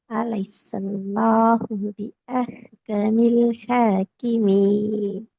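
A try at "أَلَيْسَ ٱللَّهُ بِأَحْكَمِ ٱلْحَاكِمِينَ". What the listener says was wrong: லிப் நீட்டப்படாம வருதுன்னு நினைக்கிறேன். திருப்பி ஓதுங்க அதே போல.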